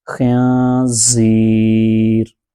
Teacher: خا کو پر کر کے پڑھیں گے، خا نون زیر خن، زا یا زیر زی، زی، یہ یہاں نون ساکن کے بعد زا حروف اخفا میں سے ہے تو یہاں اخفا ہوگا۔ یہ جو ناک میں آواز لی جا کر پڑھ رہے ہیں اس کو اخفا کہتے ہیں